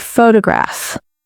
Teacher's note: The stress is on the first syllable, photograph. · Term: word stress